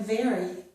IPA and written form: ver.i (very)